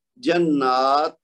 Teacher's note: ہمس آپ جانتے ہیں، پچھلی کلاس میں ہم نے حروف ہمس پڑھے تھے، فحسہ شخص سکت، جس کا مجموعہ ہے 10 حروف ہے نا، ان میں سے ایک تا بھی تھا۔ تو تا ساکن ہو کسی لفظ کے آخر میں تو ہمس کے ساتھ پڑھتے ہیں · تو اس کی اگر حالت ہو اور اس کو بھی وقف کر رہے ہوں تو یہاں پہ پھر ہا کی آواز نہیں آئے گی، وہ صرف گول تا کی صورت میں ہے۔ یہاں پہ تا ساکن ہوگا لیکن وہ ہمس کے ساتھ وقف کیا جائے گا